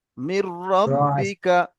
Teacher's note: পরে র এসছে বলে আওয়াজটা উচ্চারণ হয়নি, র এর সঙ্গে ধরে করতে হয়েছে